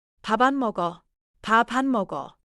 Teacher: Because 안 begins with a vowel sound, the final sound of 밥 attaches to it.